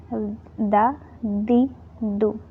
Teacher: It's normal thin letter. Tip of your tongue touching the roots of your top two teeth.